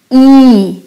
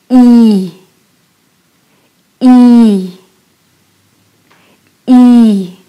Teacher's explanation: It's a little bit higher, closer to the front. But when you say E, you stretch out your lips a little more and it's a long sound